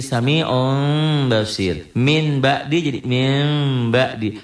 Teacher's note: shatihim manalladzi kemudian di halaman 21 tentang iqlab Apa itu iqlab bunyi nun mati atau tanwin berhadapan dengan huruf ba bunyinya jadi m disertai dengan samar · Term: iklab